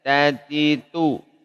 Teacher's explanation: Huruf ta, dia dari ujung lidah bertemu dengan pangkal gigi seri atas, sama seperti to dan dal tadi ya.